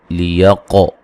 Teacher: قاف کو موٹا ادا کریں گے اور قلقلہ کریں گے